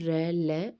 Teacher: दंत मूल में जो जड़े होती वहां पर स्पर्श होता है